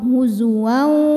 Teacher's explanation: Maka tanwinnya ini dileburkan ke waw, huzuwaw, sambil kita tahan bunyinya, dengung ya, masuk dan dengung. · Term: idgham bi gunnah